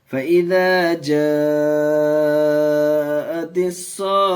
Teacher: گولتا پر وقف کریں گے تو ہائے ساکنہ بنا کر کے کریں گے. ہم نے قاعدہ پیچھے پڑھا کہ گولتا پر اگر وقف کرنا ہو، سانس توڑنا ہو تو پھر وہ ہائے ساکنہ بن جاتی ہے، تو ہائے ساکنہ کے ساتھ وقف کریں گے.